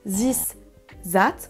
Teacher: pour this et that on va remplacer souvent par un Z